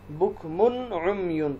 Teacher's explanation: تنوین کے بعد حروف حلقی میں سے عین ہے تو یہاں اظہار ہوگا، غنہ نہیں کریں گے، بکمن عمیون پڑھیں گے، بکمن غنہ نہیں کرنا، عمیون یہاں پر اخفا ہوگا اس لیے کہ تنوین کے بعد حروف حلقی میں سے کوئی حرف نہیں ہے۔